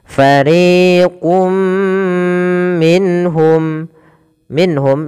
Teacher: disertai dengan gunah disertai dengan penahanan dan memasukkannya ke rongga hidung kita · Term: idgham bhunah